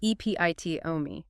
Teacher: 4 syllables. Stress on the second.